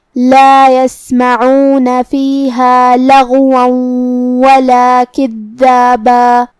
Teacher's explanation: کلمت یسمعون میں یہاں حرف العین کو ہم حلق کے درمیان والے حصے سے پڑھیں گے